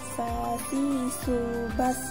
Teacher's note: Melafalkan huruf sa menggunakan lidah terdekat hampir di atas 2 gigi seri bagian bawah, diiringi dengan mengalirnya udara dan napas secara bersamaan.